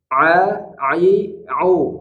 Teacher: aspek kelima ini hanya untuk aspek teori saja maka pastikan yaitu huruf Ain harus diucapkan dari makhrajnya tengah tenggorokan dan tidak ada suara hidungnya